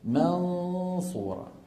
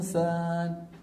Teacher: التفخيم سببه ان اللسان مهيا على مخرج الصاد والصاد ايه مفخمه